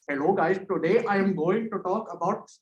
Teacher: So the retroflex sounds are like a unique set of sounds. When people have these Indian accents, they add in a lot of these retroflex sounds.